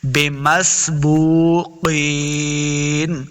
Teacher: بو واو مدہ ہے، اس کو دو حرکات لمبا کریں گے، بمسبوقین۔ قاف حروف مستعلیہ سے اس کو موٹا پڑھیں گے، قاف زیقین، یا مدہ ہے، اس کو دو حرکات لمبا کرنا ہے، بمسبوقین۔